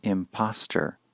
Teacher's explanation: when we move from the verb impose to the noun form impostor the second syllable becomes shorter